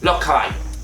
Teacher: en el caso de la S se suele sustituir por una H aspirada